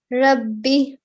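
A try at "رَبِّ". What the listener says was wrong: Okay, so make sure this raw is thick. Try again.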